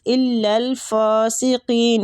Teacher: فا کے اوپر کھڑی زبر ہے تو اس کو ایک الف کھینچیں گے